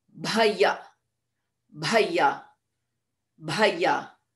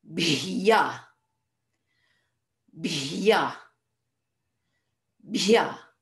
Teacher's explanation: we have to go from a bha into a ya without any vowel in between